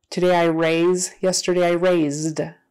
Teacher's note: That voiced Z becomes a voiced D instead of T for that ED.